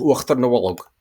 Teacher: notice the epenthetic vowel, the inserted vowel there between a tongue front sonorant, so LN, R, and a voiced obstruent, M, B, D, G, or indeed any of those consonants with a H after it, with certain exceptions.